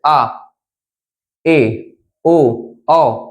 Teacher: जिन स्वर को बोलते समय लगभग आधा मुंह हो आधा मुंह खुले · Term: अर्धवत